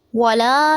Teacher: ولا میں لام کو تھوڑا سا لمبا کریں گے، مد اصلی ہو رہا ہے یہاں پہ.